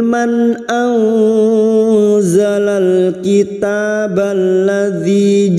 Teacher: maka nun sukun dibaca jelas tanpa mendengung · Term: Idhar halq